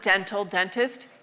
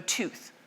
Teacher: A d in Indo-European, which we keep in the Latin, dental, dentist, became t, so tooth